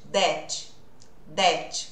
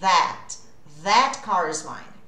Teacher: Então, ao invés de that, a gente vai usar esse TH. Língua entre os dentes. Uso as cordas vocais. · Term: TH com voz